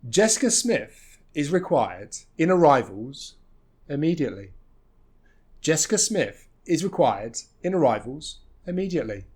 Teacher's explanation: we almost stress everything it's just the is and in that are going to be reduced a little bit